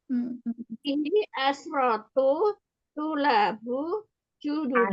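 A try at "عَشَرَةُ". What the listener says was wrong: Asyaratu. Jangan disukunkan Eyang, fathah semua asyaratu.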